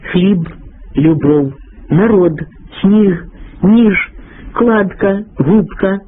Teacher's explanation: дзвінка вимова приголосних у кінці слова і складу